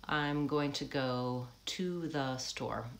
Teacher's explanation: I don't say a clear vowel on to, or even really on the. I shorten both of those. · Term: reductions